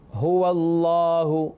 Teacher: ہا جو ہے وہ حلق کے اس حصے سے ادا ہوتا ہے جو سینے کے قریب ہے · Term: حروف حلقی